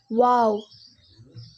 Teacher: மீம் இரு உதடுகளின் ஈரப்பகுதியின் சேர்வதால் உருவாகிறது. வாவ் இந்த வாவ் வந்து இரு உதடுகள் குவிப்பதால் உருவாகிறது